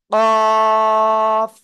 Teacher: জিহ্বার গোড়া তার বরাবর উপরে তালুর সাথে লাগিয়ে কাফ চার আলিফটা নিয়ে মোটা আওয়াজে উচ্চারণ করব